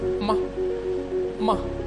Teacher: number four tone, that is about from up to down, like the things get filled up, such as ma, ma, from up to down. · four tone is from up to down